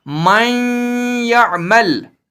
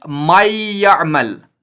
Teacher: ادغام مع الغنہ ہوگا نہ کہ ادغام بلا غنہ